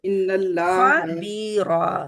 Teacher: रा मोटी रहेगी, खा मोटा रहेगा